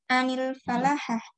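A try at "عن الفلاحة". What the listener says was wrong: Anil filaha. Ya, filaha kayak dirosa, kiroa, kitabah. Jadi fa-nya itu dibaca kasroh ya, untuk menunjukkan perbuatan.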